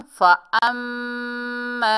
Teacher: फ़अम्मा, फ़ा ज़बर फ़ा, हमज़ा को मीम मुशद्दद से मिलाएंगे और गुन्ना करेंगे। मजबूती और जमाव से भी पढ़ेंगे क्योंकि तशदीद वाला हर्फ है।